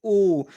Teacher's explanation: तो ओ की बात करेंगे कि ओ का उच्चारण स्थान क्या है, तो इसका उच्चारण स्थान कंठ और ओष्ठ दोनों होता है। आप बोलिए ओ, तो इसमें कंठ से और ओष्ठ दोनों का प्रयोग होता है, इसलिए इसे कंठ ओष्ठ ध्वनियाँ बोलेंगे।